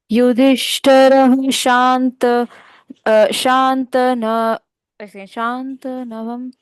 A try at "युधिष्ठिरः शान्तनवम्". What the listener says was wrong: त का उच्चारण पूर्ण। युधिष्ठिरः शान्तनवम्